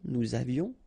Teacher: final S not pronounced, and then little liaison, nous avions.